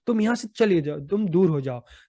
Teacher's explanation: इसमें अंतिम वाक्य जो है, तुम दूर हो जाओ मेरी नजरों से, उस पर ज्यादा बल दिया जा रहा है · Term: वाक्य बलाघात